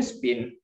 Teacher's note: in spin is a weak puff of air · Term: aspiration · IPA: [spɪn]